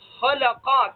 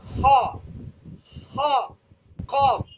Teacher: تو خاء کو اور قاف کو ادا کرتے وقت زبان کی جڑ کا اکثر حصہ تالو کی طرف اٹھ رہا ہے۔ خا، خا، قاف، تو تالو کی طرف اٹھ رہا ہے، تو جس کی وجہ سے یہ حروف موٹے ہو رہے ہیں۔ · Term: صفت استعلا